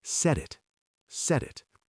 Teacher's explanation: When it connects to the word it, that T changes into a soft D sound.